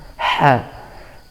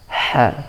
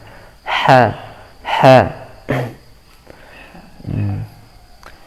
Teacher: Huruf ha ini kalau kita ucapkan dengan tepat, ha akan ada suara tajam dari tengah tenggorokan